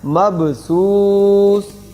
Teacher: اور سا کی آواز سین نہ بنے، سیٹی نہ آئے